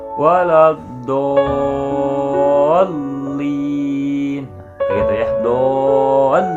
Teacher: kita panjangkan dulu huruf do sampai 5 atau 6 harokat ya, kemudian masuk ke dalam tasydidnya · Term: mad lazim musaqqal kilmi